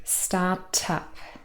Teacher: Here we have start and up. Now again, the first word ends in the consonant t, and the next word starts with the vowel sound and so we link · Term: catenation